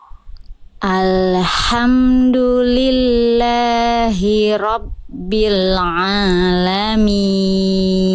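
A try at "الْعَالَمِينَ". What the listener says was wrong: Tinggal nanti sempurnakan huruf ain. Ini semuanya bukan kesalahan besar ya. Ini kesalahan kecil semua. Ain jangan sampai dibaca alamin. Jangan masuk hidung ya. ya agak alami tapi jadi suaranya jangan cara ngeceknya gini coba ya, ini agak sedikit mempergunakan organ kita yang lain. Panjangkan huruf ainnya lalu sambil buka tutup hidung kan masih nah berarti tandanya itu ainnya ada yang masuk ke hidung. Nggak boleh gitu suaranya.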